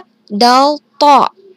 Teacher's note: berasal dari ujung lidah dan bertepatan dengan pangkal dua gigi seri atas